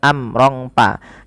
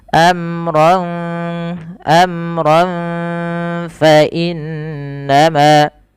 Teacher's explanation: Cara membacanya langsung samarkan nunnya, tanwinnya kepada fa, jangan amrong pa. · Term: ikhfa